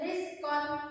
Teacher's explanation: Kalau ra tarqiq dibaca tipis